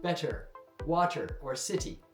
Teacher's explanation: T often becomes a D sound in casual English speech. · Listen for the D sound appearing in words where you expect a T sound.